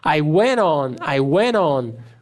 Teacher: Cortei o T e já juntei com on.